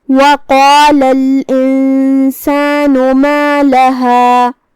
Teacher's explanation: ہم قاف کو اور مد الف کو دونوں کو تفخیم سے ادا کریں گے، جو کہ آخری میں لام پہ زبر ہے لہذا اس کا دھیان رہے.